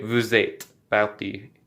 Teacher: because the next word begins with a vowel, you do pronounce the S, and you almost say these two words as if they were one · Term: le liaison